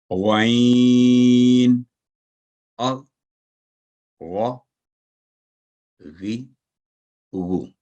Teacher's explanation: حلق کے اوپر والے حصہ زبان کی جڑ کے قریب سے یہ حرف ادا ہوتا ہے اور ہمیشہ بھاری آواز میں ادا ہوتا ہے. یہ بھی تھک لیٹر ہے.